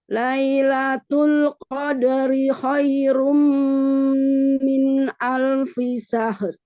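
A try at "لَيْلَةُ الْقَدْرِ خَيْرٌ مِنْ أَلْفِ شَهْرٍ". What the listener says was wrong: Sya, bukan sa. bukan tebal. Sya itu ada shin, itu ada tawasud. Tafashi, bukan sofir. Tafashi. Sya.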